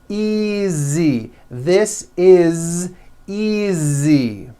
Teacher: Again, the S is like a voiced Z.